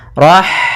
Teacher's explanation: maka dinamakan dengan ro tafkhim kemudian Rahmani pada lafaz Rahmani ada H sukun maka di sini H mempunyai sifat yaitu sifat Hames maka alirkan nafas kita Rah nah kemudian pada lafal Ma ada bacaan Mad thabii'i yaitu